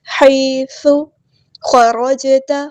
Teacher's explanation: خا اور را ہمارا یہاں پہ ہیوی لیٹر ہے، پورا ادا کریں گے، موٹا پڑھیں گے، اور جیم ساکن کو ہم یہاں پہ ہلائیں گے، کلکلا ہو رہا ہے، ہم اس طرح نہیں پڑھ سکتے، اسے خرجتا نہیں، خراج اس طرح ہلائیں گے، خراجت۔